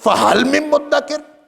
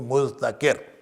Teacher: تو مذتکر جو ہے وہ اس کی جو تا ہے، تا وہ دال میں تبدیل ہوئی، اور یہ دال بھی دال میں مدغم ہو گیا اور یہ مدکر بن گیا